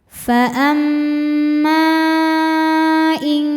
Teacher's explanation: Maka mimnya dipanjangkan boleh empat boleh lima harakat. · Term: mad jaiz munfasil